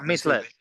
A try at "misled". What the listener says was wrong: That's it. Yeah, misled. That's it. Misled. You've got it.